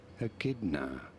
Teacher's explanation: you do want to stress on the second syllable a n uh both British American pronunciations are rather similar here